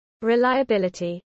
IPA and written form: ɹɪˌlaɪ.əˈbɪl.ə.ti (reliability)